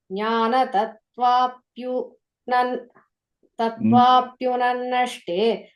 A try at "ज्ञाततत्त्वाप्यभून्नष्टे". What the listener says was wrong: Second line, first word is nyata, ta sound.